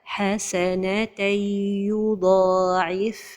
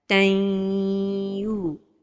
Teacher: Et l'idgham se fait avec un temps pour la ghunna.